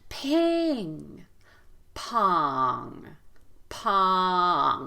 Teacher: We don't have louder, longer, and go up in pitch, but we're not comparing it to anything else right now. So both vowels will be loud, long, and you'll hear a step down in pitch. Ping. Pong, pong, like you're going down a little step with your pitch.